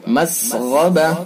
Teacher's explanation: مسغبہ، غین کے اندر یہ غین پر ہوگا، حروف مستعلیہ میں سے پر یعنی موٹا پڑھا جائے گا